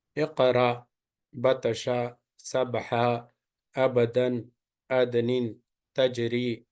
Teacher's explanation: So whenever this qatabajad, qaf, ta, ba, jim, dal having sukun on it, it should be pronounced with the qalqala, little bit bouncing, return back the sound